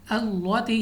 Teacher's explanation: یہاں پہ ہم نے لام کو باریک پڑھنا ہے، اپنی آواز کو اوپر اٹھانا نہیں ہے، یعنی اللاتی یعنی منہ کو کھولنا نہیں ہے، ہم نے باریک آواز کے ساتھ اللاتی پڑھنا ہے۔